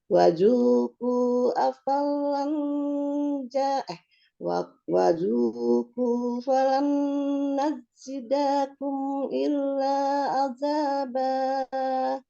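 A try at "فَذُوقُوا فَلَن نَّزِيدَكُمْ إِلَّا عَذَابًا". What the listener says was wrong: Kalimatnya fazuku bukan wazuku. Kemudian alif itu tidak dibaca ya. Itu bawaannya dari waw sukun itu. Jadi fazuku falan kufa.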